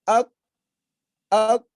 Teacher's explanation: Kan nggak enak. Ada seolah-olah ada yang nyangkut. Itulah sifat disebut asyiddah.